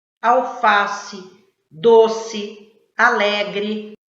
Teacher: palavras que terminam com vogal e tem som de i